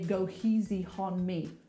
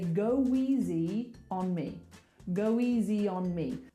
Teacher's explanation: We want to link it with a w.